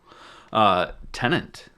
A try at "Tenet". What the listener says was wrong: Tenet. There's no N other than in the middle. Oh, it sounded like you said tenant. Yeah, Tenet.